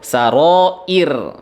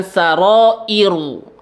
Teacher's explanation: Dibaca 6 harokat. Kemudian ra-nya didahului oleh huruf hamzah yang memiliki harokat kasroh, maka ra-nya di sini dibaca tipis